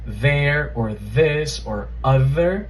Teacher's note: the voiced dental fricative, right, that th sound, that buzzing sound from words like there or this or other